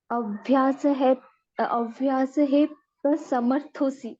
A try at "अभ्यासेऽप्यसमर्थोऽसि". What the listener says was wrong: आप माता जी ह बोल रहे हो ना, ह का उच्चारण है नहीं कहीं पर भी। अभ्यासेप्य समर्थोऽसि